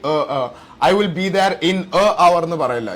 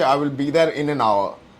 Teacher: It is actually that is the spelling, H-O-U-R, but you actually, when you say it, the H is silent